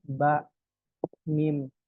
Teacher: Ba ini syidah i jadi suaranya terputus dan mim ini punya sifat bainah